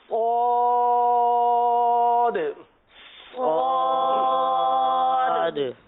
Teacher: زبان کی نوک اور دونوں دانتوں کے اندرونی کنارے. اور اس حرف کو پر پڑھیں گے، حروف مستعلیہ ہے.